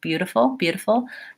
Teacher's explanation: I often teach words with with the flap T in the middle as using a light D